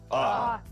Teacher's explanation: выталкивать воздух а мы еще делаем какую-то там мили секундную задержку звук начинается как бы с щелчка а услышите щелчок начале звука а диафрагма у нас выталкивает звук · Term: твердую атаку звука